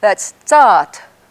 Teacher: it has a long A and then it has a whispered barred U at the end